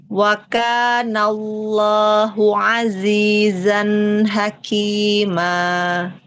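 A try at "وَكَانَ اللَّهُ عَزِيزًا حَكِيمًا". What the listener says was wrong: Lafzul jalalah coba tebalkan lagi. 4 mangkal lidahnya.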